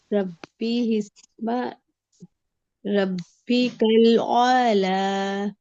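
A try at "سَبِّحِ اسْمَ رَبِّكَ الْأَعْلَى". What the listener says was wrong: اعلی، موٹا کوئی بھی حرف نہیں ہے، تمام حروف کو باریک ادا کیجیے.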